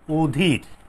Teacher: এটি হচ্ছে সংবৃত, অধীর, ঠিক আছে। চোয়ালটা ফাঁক কম হচ্ছে, ঠোঁটটা কিন্তু গোলাকার হচ্ছে, ও এর মতো হচ্ছে।